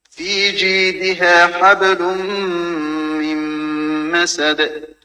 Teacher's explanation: சுக்குன் செய்யப்பட்ட நூனை தொடர்ந்து மீம் வருது. எனவே அந்த இடத்திலும் நாங்கள் 2 ஹரக்கத்தளவுக்கு நீட்ட வேண்டும் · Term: இதகாமுடைய சட்டம்